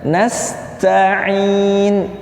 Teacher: bukan dibaca hamzah tapi dibaca ain ya